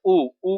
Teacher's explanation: जैसे आप ऊ ऊ करते हो तो आपका ओठ जो है गोलाकार बिल्कुल हो जाता है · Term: वृत्त मुखी स्वर